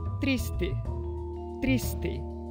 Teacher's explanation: sem a palatalização do t e com o s conservado no final da sílaba